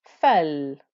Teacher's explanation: This is where the fa is joining to the lam. And I'm giving time to that lam because it has a sukun.